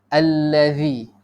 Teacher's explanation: Huruf zal kita kena keluarkan sikit lidah.